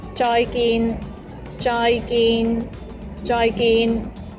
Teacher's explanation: both of the syllables, joy and gin, are both mid-flat tones